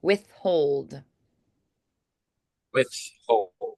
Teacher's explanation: yes withhold withhold yes so that would be unvoiced withhold withhold so it feels very airy because of that th and the H right after it so it feels very like air flowy and windy all right